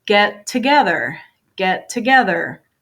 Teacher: because I have two T's, get and then together, I'm going to combine this sound